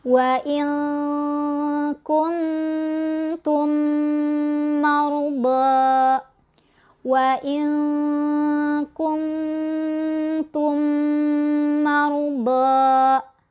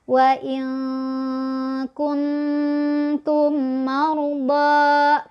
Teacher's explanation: ditahan dulu dua ketukan dengungan nya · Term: idgham mimi